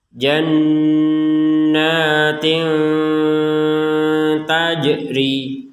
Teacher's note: Tanwin di sini ya, kasrotain bertemu dengan huruf ta, maka dibaca dengan samar.